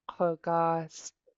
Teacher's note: This underline K is pronounced in the back of your throat.